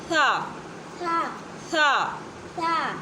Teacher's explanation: زبان کی نوک جب سامنے والے دو دانتوں کی نوک پہ لگتی ہے تو ادا ہوتا ہے